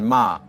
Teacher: with a falling tone